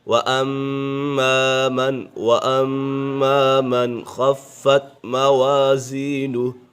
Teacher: میم مشدد ہے، میم مشدد میں ہمیشہ غنہ ہوتا ہے